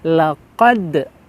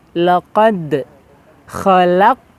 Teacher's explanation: pantulannya terasa setelah huruf qaf ya, ada huruf dal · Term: huruf qalqalah